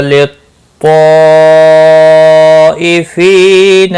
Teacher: للطائفین یہاں پر بڑی مد ہے، مد متصل، چار الف کے برابر کھینچ کر پڑھیں گے۔